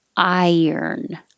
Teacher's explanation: your tongue goes very high and then it slides down and makes a y